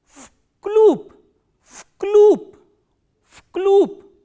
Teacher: Why? Because this v is voiced, so it will be pronounced as its voiceless counterpart, which is f, and this b is again a voiced consonant, so it will be pronounced as p.